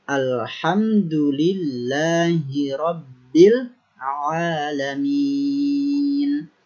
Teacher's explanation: kalimat sebelumnya maka Hamzah ini digugurkan artinya langsung kita masuk kepada lemnya Alhamdulillahirobbil alamin apabila dia di awal ayat atau di awal kalimat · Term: Hamzah washal